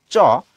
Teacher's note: তালু কোনটা বলছি জীভের উপরের যে মাংস জায়গাটা আছে আমাদের সেইটা যখন তুমি উচ্চারণ করো চ তখন খেয়াল করে দেখো তোমার জীভের যেই মাথাটা সেটা কিন্তু তোমার ওই তালুতে যেয়ে টাচ করে · তোমার জিভের যেই মাথাটা সেটা কিন্তু তোমার ওই তালুতে যে টাচ করে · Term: তালব্য